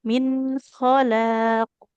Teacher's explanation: Min dia bunyi nun sukunnya jelas. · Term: izhar